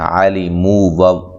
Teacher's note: مو و مدہ ہے، لام کو لمبا نہیں کرنا